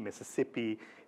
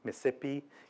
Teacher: what's called haplology, Mississippi being pronounced as Miss'sippi.